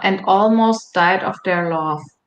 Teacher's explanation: the intonation pattern tends to be uh uh quite level until you get to the last part of the sentence